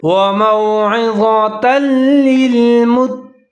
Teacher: تا اور لام دونوں ملا کے پڑھیں گے، یہاں بھی ادغام تام ہے